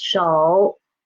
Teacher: this third tone here is really starting from the pitch 2. And it fell to pitch 1 and it didn't rise up. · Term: half third tone